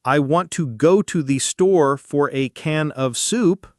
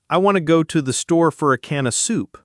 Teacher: The word to becomes ta. For becomes fur.